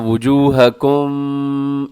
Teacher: میم ساکن کے بعد شین ہے، تو یہاں میم ساکن کا اظہار ہوگا جسے کہا جاتا ہے اظہار شفوی